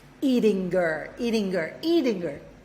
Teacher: So I'm doing this, I'm dropping the H, right?